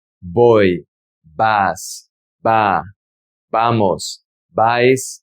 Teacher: And remember that in Latin America, we don't really pronounce the V sound, not even the B sound. The B in Latin America is more relaxed.